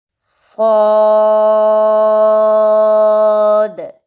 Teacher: سب سے پہلے ہے صاد، یہ موٹا حرف ہے اور اس کے اوپر مد ہے۔ 6 سیکنڈز تک ہم اس کی آواز کو لمبا کریں گے۔